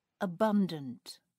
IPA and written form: əˈbʌndənt (abundant)